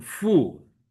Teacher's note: And 父 亲 here is fourth tone, fu